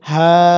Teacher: সাধারণত খারা জবর থাকলে সেখানে এক আলিফ টানতে হয়, কিন্তু এখানে আমরা টানবো ৩ আলিফ। ৩ আলিফের চিহ্নটি এখানে দেওয়া আছে। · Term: ৩ আলিফ টান